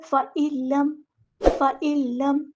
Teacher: نون ساکن کے بعد لام آیا ہے تو ادغام ہوگا یہاں پر، ادغام بلا غنہ، ادغام کامل